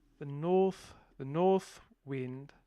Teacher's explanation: we will say it's a slightly lowered o